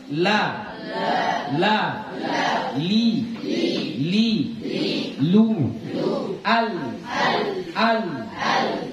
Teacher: kalau bilang la, itu tepi lidah kita itu masih kena ke langit-langit, ya. Tepinya itu tepi yang sini, ya.